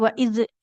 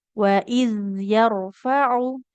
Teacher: hati-hati dalam pengucapan zal sukun. Jangan memantul. Enggak boleh waid ya.